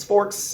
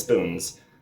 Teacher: But the pronunciation differs depending on the final sound of the singular noun. Forks ends in an s sound while spoons ends in a z. If the noun's final sound is unvoiced tp, the plural is pronounced as an s.